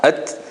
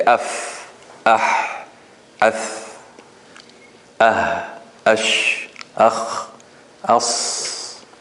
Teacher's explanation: When you say as, you see the flow of air continues.